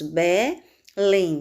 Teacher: Belém, sílaba mais forte, lém